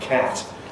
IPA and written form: kæt (cat)